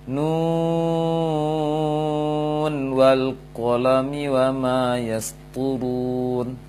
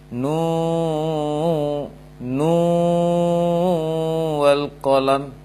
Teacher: Maka keliru kalau didengungkan nu wal qalam, ya, akan menyulitkan nantinya. Berdasarkan riwayat Imam Hafiz itu dibaca jelas nun di ujung huruf muqatta'ah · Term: tidak dengung